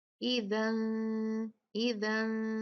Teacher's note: نون کو صاف نہیں پڑھتے، اس کو چھپایا جاتا ہے غنہ کر کے 2 کاؤنٹ. اذن، اذن، تو یہ اخفا کہلاتا ہے.